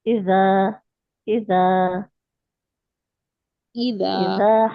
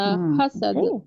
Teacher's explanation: تو یہ دونوں میں بہت یعنی بالکل الگ آوازیں، لیکن زبان آپ کی صحیح جگہ لگنی چاہیے. نیچے والے دانت پہ لگیں گی بیچ میں تو زا نکلے گا سیٹی والا، اور اوپر والے دانتوں سے تھوڑی باہر نکلے گی تو اذا نکلے گا بغیر سیٹی والا. صحیح ہے، دال زال والا.